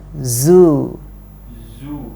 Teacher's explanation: Yang harus diperhatikan adalah zainya. Zu, harus ada bunyi z. Ya, itu kalau di ilmu tajwid dinamakan dengan sofir, tajam di telinga.